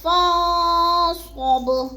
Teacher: فن پہ جو ہے اکفا ہے، آواز کو ناک میں چھپا کر پڑھنا ہے، فا کو ہم نے نون کے ساتھ ملا کے پڑھنا ہے۔